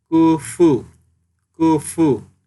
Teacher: সামনের উপরের দুই দাঁতের আগা নিচের ঠোঁটের পেটের সাথে মিলিয়ে উচ্চারণের সময় বাতাস বের হবে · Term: ফায়ের উচ্চারণ